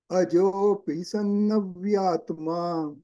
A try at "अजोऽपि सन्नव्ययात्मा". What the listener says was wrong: व्ययात्मा Vya and ya both should be heard separately.